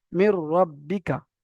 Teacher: নুন সাকিনের পরে যদি র আসে বা লাম আসে তাহলে নুন সাকিনটা রয়ের সঙ্গে সম্পূর্ণ মিলে যাবে। সম্পূর্ণ মিলে যাবে, আর গুণনা হবে না। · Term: তাম